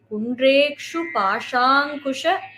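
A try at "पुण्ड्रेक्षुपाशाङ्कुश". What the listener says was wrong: So here Pundrekshu, you have to give a little more stress. Pundrekshu Pashankusha Pushpabana Haste.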